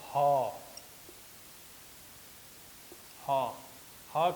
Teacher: ह कर जो उच्चारण होवेला उस स्वर यंत्र मुखी से होवेला। जैसे कि देखो रहा उनके ह काफ़ी अंदर, मतलब अंदर से बुझाते है, ये जगह हम इनकर नाक और मुंह कर जते हम इनकर नाक और मुंह कर संधि स्थल है सेहे जगह से इकर उच्चारण होवेला ह कर।